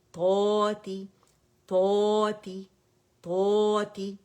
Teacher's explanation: پہلے درجے کی تفخیم بھی ہو رہی ہے, اور طا ویسے بھی مزید موٹا لیٹر ہے, اطباق والا